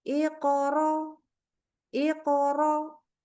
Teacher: baca Hamzah sukun enggak kedengaran atau lemah